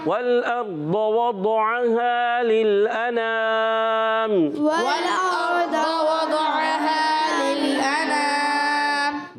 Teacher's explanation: واو کی ادائیگی ہونٹوں کی گولائی سے. واو کو لام سے ملائیں گے، لام کو ہلائیں گے نہیں.